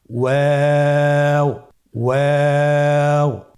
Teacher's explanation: ওয়াও হরফটি উচ্চারণের ক্ষেত্রে বারিক হবে এবং 3 আলিফ টেনে পড়তে হবে। · আপনারা আমার সাথে বলুন ওয়াও ওয়াও। 2 ঠোঁট গোল করে মাঝখানে ফাঁক রেখে হরফটি উচ্চারণ করতে হবে।